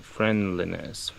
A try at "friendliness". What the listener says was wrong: Yeah, the target I have in my head is friendly, so a E sound here instead of a I. It might get reduced in connected speech. I'm not sure. Like in kind of, you know, if I'm not paying attention to it.